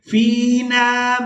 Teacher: فا کو یائے مدہ کے ساتھ ملاتے ہوئے کھینچ کر ادا کریں گے